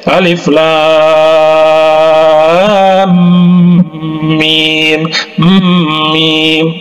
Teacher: Jadi kemudian huruf mimnya itu, ya, didengungkan, ya, digunahkan, ya. Alif Lam Mim, mim, bukan Alif Lam Mim, bukan, ya, karena ada tanda tasydid di situ. · kemudian huruf mim-nya itu jadi didengungkan ya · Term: Idgham Mimi